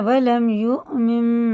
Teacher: یہ دیکھو حمزہ میں جھٹکا ہے